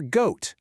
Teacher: That's a strong G sound that you can feel coming from the back of your throat.